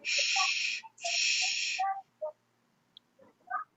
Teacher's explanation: It should be voiceless. It shouldn't have any vibration. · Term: voiceless sounds